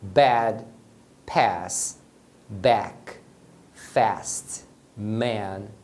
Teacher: o som curto da letra A em inglês é parecido com o som da letra e a diferença é que a letra A tem um som mais aberto